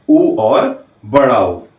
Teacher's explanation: जब भी हम ऊ या बड़ा ऊ का उच्चारण करते हैं तो हमारे होंठ गोलाकार हो जाते हैं और अंदर से आती हुई वायु इन होठों के पास से गुजरती है। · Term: ओष्ठ्य